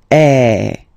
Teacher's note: the sound is really open, and normally your mouth should be opened a little bit more than with the accent aigu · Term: accent grave